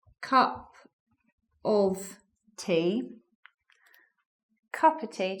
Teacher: so the of joins the words before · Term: elision